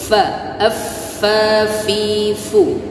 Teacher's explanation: F ujung gigi seri atas dengan bibir bawah bagian dalam. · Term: hams